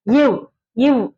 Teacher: மேல்வாய் பல் வந்து கீழ் உதடு பொருந்துவதால் பிறக்கின்றது